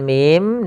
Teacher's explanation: itu membacanya mim, panjangkan dulu mi-nya sepanjang 6 harakat